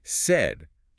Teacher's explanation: Said is pronounced identically to the emotion sad, but with a slightly tighter, shorter A sound. Said, your mouth barely opens.